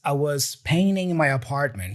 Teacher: So notice that the word painting here or painting has this N-T combination, right? Americans usually drop the T in those cases and they only pronounce the N before the T. So that's why we hear him saying painting with an N sound and not painting.